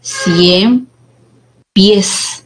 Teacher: Termina en la consonante S y la sílaba tónica pues sería en la última posición y esta es una palabra aguda